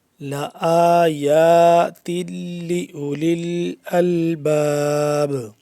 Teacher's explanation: دونوں ایک ایک الف کے برابر لمبے ہوں گے کیونکہ دونوں کے اوپر کھڑا زبر ہے